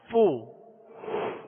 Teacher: اور اس کی مخرج فا کا اوپر کے دونوں دانتوں کے کنارے اور نچلے ہونٹ کا تر حصہ، یہ اس کا مخرج ہے